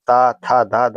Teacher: जिनका उच्चारण ऊपर के दांतों पर जीभ लगने से होता है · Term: दंत वर्ण